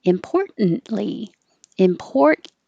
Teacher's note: Most importantly. But most people are going to be a little more relaxed and not make the t noise and just hold the N